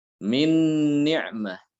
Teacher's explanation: Maka kaidahnya huruf yang sukun ini akan diidghamkan ke dalam huruf yang berharokat tadi yang serupa. Ya, nun sukun ketemu dengan nun sama-sama nun, berarti harus diidghamkan.